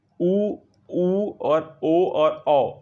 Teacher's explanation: ऊ, ऊ और ओ और औ, इनको बोल के देखिए, आपके होंठ की आकृति गोल हो जाएगी, आपका होंठ गोल हो जाएगा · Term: वर्तुल